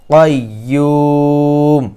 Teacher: কফ হচ্ছে মোটা হরফ এবং দ্বিতীয়ত কফ হচ্ছে কলকলা হরফ এজন্য সকলে এখানে মোটা করে বলবেন এবং কলকলা করবেন